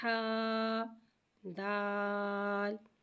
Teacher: ہا کو ایک الف یعنی 2 مقدار کھینچ کے پڑھیں گے۔ دال کو ایک الف یعنی 3 مقدار کھینچ کے پڑھیں گے۔